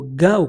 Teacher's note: Australia वाले भी ओ को आओ कर देते हैं, ठीक, गो को गाओ कर देते हैं